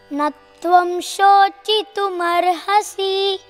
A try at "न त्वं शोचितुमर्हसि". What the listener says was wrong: Give that, you can give that sustain, okay? A little bit sustain, don't stop it abruptly, because if you chant it that is okay, न त्वं शोचितुमर्हसि, that is okay, but when you chant it Musically you can give a